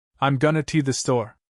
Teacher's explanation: Going to becomes gonna.